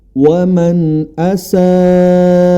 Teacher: kata dengan mad asli maka berubah dia menjadi mad wajib muttasil mad wajib muttasil dibaca boleh empat atau lima harakat